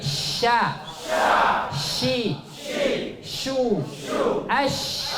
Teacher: Huruf shin tempat keluarnya di tengah lidah kita. Dan dia memiliki sifat tafashi. Sya. Anginnya banyak.